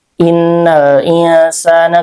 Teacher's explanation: dibacanya ee nun sukunnya samar ya dan disertai dengan gunah atau dengung. Innal insana ketukannya 2 3 sampai emp harakat. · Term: ikhfa